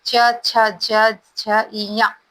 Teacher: च वर्ग का उच्चारण स्थान जो है तालु है